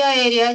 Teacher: La mayor fuerza de voz está en la antepenúltima sílaba. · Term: esdrújula